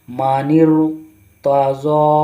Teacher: را کو موٹا کر کے پڑھنا ہے، کیونکہ جو را کے پہلے جو زیر ہے وہ ایک ہی کلمہ میں نہیں ہے، یعنی را سے پہلے زیر نہیں ہے بلکہ دوسرے کلمہ میں زیر ہے، اس لیے را کو موٹا کر کے پڑھیں گے۔